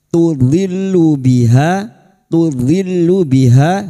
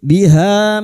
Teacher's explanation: Ha fathah diikuti alif dua harakat mad thabi'i